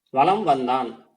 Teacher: மாதிரி மகர மெய் எழுத்துக்கு அடுத்து வகர எழுத்து வந்தது அப்படின்னா அந்த இடங்கள்ல மகர மெய் வந்து தனக்குரிய அரை மாத்திரை அளவுல இருந்து குறைஞ்சு கால் மாத்திரை அளவுல ஒலிக்கும் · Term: மகர குறுக்கம்